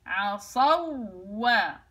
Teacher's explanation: بجيب واو ساكنة وواو متحركة بنفس الوقت، اذهب الى مخرج الواو مرة واحدة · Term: واو مشددة